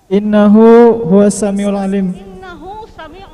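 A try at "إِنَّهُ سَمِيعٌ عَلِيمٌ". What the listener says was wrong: Innahu samiun alim. Enggak ada huwanya.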